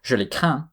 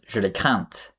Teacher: spelled with a final consonant, which is usually silent, but then becomes heard when a feminine ending is in place